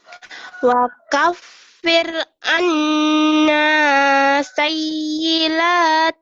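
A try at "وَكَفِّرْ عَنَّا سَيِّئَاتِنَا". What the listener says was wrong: bukanlah ini a. Sayyi'a, bukan sayyila.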